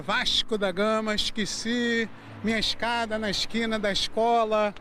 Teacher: Esse S meio misturado com X, trocando o E pelo I, não é só aqui no Rio, não. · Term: chiado carioca